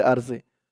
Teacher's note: এখানে ওয়াকফ করার কারণে এই জেরের পরে ইয়া সাকিন এক আলিফ টানটা তিন আলিফ টান হয়ে গেছে